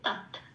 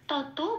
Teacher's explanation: তাহলে এটা হবে তৎ। আচ্ছা, যেহেতু তয় হসন্ত অর্ধত, তয়ের সাথে জুড়ে উচ্চারিত হবে তৎ। তত বলতে পারবো না।